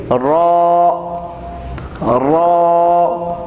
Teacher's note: را جو ہے یہ کبھی موٹا ہوتا ہے کبھی باریک ہوتا ہے، لیکن جب ہم اسے حروف تہجی میں، حروف ہجا میں پڑھیں گے تو تب اس کو موٹا پڑھیں گے